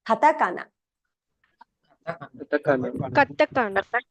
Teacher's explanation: Now, right away, since we're reading words in Japanese, you can start to get a feel for how the sounds are very even, right, across the word. It's not like English.